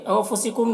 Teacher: نون میں اخفا ہوگا، نون کی آواز کو ناک میں چھپا کر پڑھیں گے۔